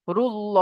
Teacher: আল্লাহ শব্দের লামের আগে পেশ এসেছে, তাই আল্লাহ শব্দের লামকে পুর করে পড়তে হবে